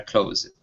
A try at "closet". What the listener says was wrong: Now this last word here, instead of close it, the word is claw, closet.